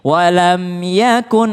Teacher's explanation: Ada lagi mim ketemu ya, tidak berdengung.